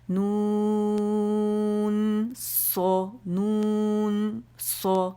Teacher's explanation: نون کی آواز ختم ہوتے ہی پاز نہیں دیں گے، کنٹینیوٹی رہے گی